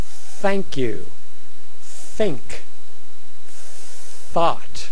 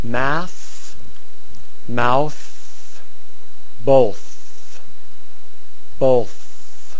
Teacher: voiceless th tongue sticking out beyond the teeth sticking out beyond the teeth Don't Be Afraid just stick it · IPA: θ